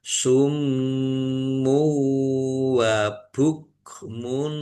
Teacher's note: Summu dumah tanwin bertemu dengan huruf wau biunah masuk dengan mendengung yaitu masuk ke huruf wau dan mendengung wau ditahan juga biar tampak mendengungnya